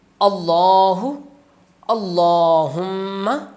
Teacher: صرف اللہ کے لام کو موٹا کر کے پڑھتے ہیں، باقی کسی جگہ پر بھی لام کو موٹا نہیں پڑھا جاتا۔